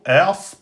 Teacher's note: Ers, donc attention, Ers, pas As, le Hamza est aminci. C'est le Sad qui est emphatique et pas le Hamza. Ers. Wa fatha alif, le wa on l'attache au sad, on lui met sa voyelle fatha, on lui met sa prolongation alif.